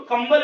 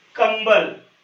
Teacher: कंबल में देखो यहां पर जो है ये अम की मात्रा जो लगाई गई है इसका उच्चारण आधा म हो रहा है कंबल अब ऐसा क्यों होता है वो भी आपको बता दूंगा